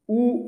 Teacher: উই এইগুলো উচ্চারণের ক্ষেত্রে দেখো জীব আমাদের পেছনের দিকে থাকছে তাই এগুলোকে আমরা বলে থাকি পশ্চাৎ